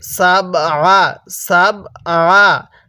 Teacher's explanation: সাবআ, সাবের মধ্যে কলকলা করব, আইনটা গলার মধ্যে চাপ দিয়ে পড়ব, তাহলে সাবআ সামাওয়াত, এরকমভাবে পড়ব।